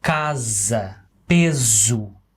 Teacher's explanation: So it's not s, it's z. You get your vocal cords involved.